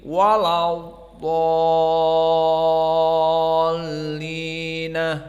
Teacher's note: nunnya difathahkan dan diberikan ha as-saktah menjadi walau dhallina